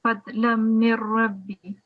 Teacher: if we've got a noon sakin before the ra mushaddad, we wouldn't be pronouncing the nasal sound